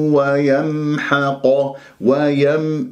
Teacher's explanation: لازم أنت تعطي مجال لجريان الصوت فترة زمنية بسيطة لأنها من أحرف التوسط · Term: الميم الساكنة